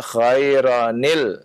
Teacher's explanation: Khairan ketemu alif lam ya harus dibaca dengan nunul ya